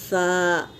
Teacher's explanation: सा का मखरज दोनों दांत के बीच में ज़बान की टिप्स डालकर, नोक डालकर अदा करेंगे सा, वरना इसका मखरज सही नहीं निकलेगा।